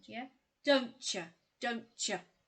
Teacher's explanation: when t is followed by y we get this ch sound